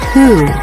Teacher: there's nothing to see at the beginning of this word the H sound happens without changing what the lips do for the next sound